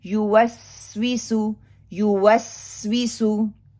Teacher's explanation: सीन के ऊपर कलकला भी नहीं करूंगी, शिद्दा भी नहीं करूंगी, बल्कि उसको पकड़ के कमजोरी की वजह से साउंड को लेके चलूंगी।